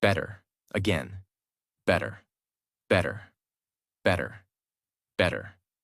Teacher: the mouth does not stop strongly on the T. The tongue touches quickly and moves on. That is why it sounds softer.